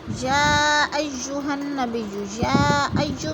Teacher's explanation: یا ایھا میں مد متصل ہے، 4 الفی مد ہے، ہم نے اس کو 4 الف کے برابر کھینچ کر پڑھنا ہے